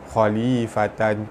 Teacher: Tanwin bertemu qaf, hukum dia ikhfa hakiki dibaca samar-samar tebal dengung 2 harakat.